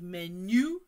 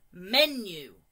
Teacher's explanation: the stress is at the start not at the end